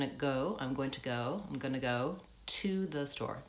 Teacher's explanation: the to becomes more of a t, vowel schwa. The vowel almost shrinks entirely out of that.